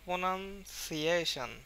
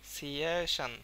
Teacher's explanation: এটা কিন্তু আমরা খুব দ্রুত উচ্চারণ করে ফেলছি, বাট সি এর ক্ষেত্রে একটু সময় নিচ্ছি এবং এখানে অনেকটা চাপ আছে